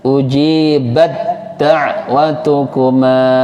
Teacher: Tak sukun bertemu dal, namanya idgham mutajanisain, dibaca lebur, hamesnya dihilangkan. · Tapi kalau ketemu dal itu nggak boleh hamas lagi, langsung jadi dal.